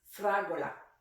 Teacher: the important thing is that we emphasize the right syllable fragola emphasizes the third from last syllable which is also common in Italian